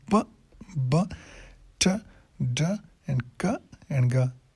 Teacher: یہ تھوڑے سے یعنی ملی سیکنڈس کے لیے اس کو اسٹاپ کرتے ہیں اور اس کے بعد ریلیز ہوتا ہے, ایکسپلوژن ہوتا ہے. اسی لیے اس کو پلاسف ساؤنڈ بولتے ہیں.